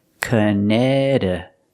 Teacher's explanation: The second C is silent. And the T after that C is pronounced with a fast D sound.